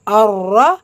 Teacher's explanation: ரால ஷத்தாருக்கு அழுத்தம் கொடுக்கணும் கூடவே ஃபத்ஹா இருக்கு வல்லினப்படுத்தி ஓதணும்